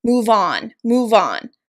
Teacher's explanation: with stress on the particle on